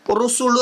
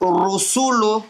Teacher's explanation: முழுசா வாயை கூப்பி நல்லா அழகா ராவ முழுசா வச்சு ஓதுறது அதுக்கு பேர்தான் வல்லினமா ஓதுவது